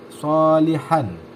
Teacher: keluar dari ujung lidah yang bertemu dengan gigi seri di bawah nah sifat huruf ini ini berupa hams tidak bersuara rukhwah istil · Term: huruf Shad